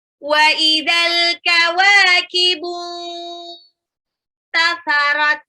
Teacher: Al-kawakibu, alnya ini dibaca jelas, alif lam qamariyah, wawunya 2 harokat mad tabi'i